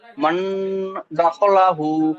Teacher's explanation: সাকিনের পরে গ্রুপে ইকফার 15টি অক্ষরের মধ্যে ডাল এসেছে, তাই নুন সাকিনের আওয়াজকে নাকে তুলে একালিক পরিমাণ গুণনা করে পড়তে হবে, একে ইকফা বলে। দালের উপর জবর এসেছে, জবর টোল হারাকাত, হারাকে তাড়াতাড়ি পড়তে হবে।